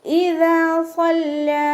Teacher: ദാലിൻ്റെ കൂടെ അലിഫ് മദ് വന്നു. 2 കൗണ്ട് നീട്ടി കൊടുക്കുക. സല്ലാ സ്വാദ് ഇസ്തിഅലാൻ്റെ ലെറ്ററാണ്.